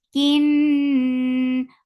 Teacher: Kin, for kasra, give e sound attached with noon. This kunna is akmal, so keep the sound in your nose for a longer time. Ni, then it is two counts long.